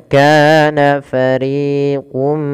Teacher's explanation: harakat karena dia Mad thaii kemudian RI juga sama dua harakat jangan dibedakan antara Ka dan RI harus sama panjangnya